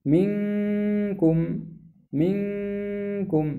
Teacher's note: من ذلك أيضا أحكام الإخفاء والغنة في قوله منكم منكم، هذه غنة منكم، يعني لو قلت منكم هذا غير صحيح، الصحيح أن تقول منكم.